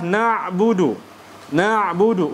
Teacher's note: huruf Ain tawassut bukan syiddah